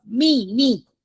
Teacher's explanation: Okay, it's not third tone. It's fourth tone.